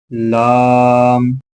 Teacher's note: زبان کا کنارہ جب اوپر کے سامنے کے 4 دانتوں کے مسوڑوں سے لگے اس سے ایک حرف ادا ہوتا ہے